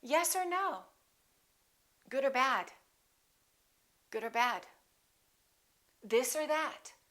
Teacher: Or becomes just a consonant